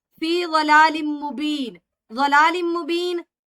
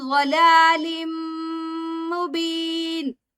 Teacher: تنوین کے بعد میم مشدد آ رہا ہے تو یہاں پر غنہ ہوگا ، اس کو ہم ضلال مبین اس طرح پڑھیں گے۔ قالوا